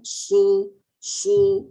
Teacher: Contoh kalau sad pada depan, su. Masa su, mulut moncong, lidahnya dia naik, terangkat. Ya, dan lambat sebutannya, ada sifatnya sifat rafawah.